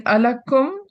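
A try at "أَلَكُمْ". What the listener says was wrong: No. Alakum. There's no sakin after the meme. So alakum remains alakum.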